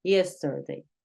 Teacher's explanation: sonido schwa que encontramos, en este caso se encuentra en la E.